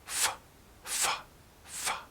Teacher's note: sound your lower lip touches your upper teeth here F F this is an unvoiced consonant sound there's no vocal chord movement all of the sound is made right here f f f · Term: F sound